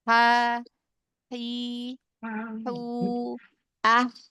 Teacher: Kalau H dia masih ada celah lebih lebar gitu ya, lebih lebar dibanding huruf ain ya. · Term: huruf H